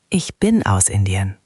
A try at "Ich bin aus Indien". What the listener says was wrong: Excellent!